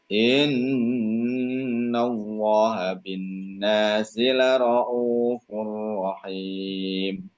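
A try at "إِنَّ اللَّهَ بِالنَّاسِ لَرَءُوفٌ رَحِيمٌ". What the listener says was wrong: Diulang, jangan sampai tapi innallaha langsung ya. Coba innallaha.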